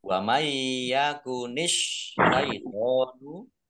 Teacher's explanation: idgham bi gunnah, masuk dengan mendengung, yaitu mendengung ya, masuk ke huruf ya, nun sukunnya tidak dibaca. Mendengung ya, biar mendengung maka harus ditahan.